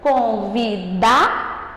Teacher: Você viu que o dá, ele ficou mais forte a partir do momento que eu pronunciei ele.